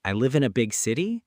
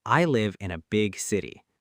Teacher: Option A, said with a rising tone like a question, I live in a big city. Option B, said with a flat confident tone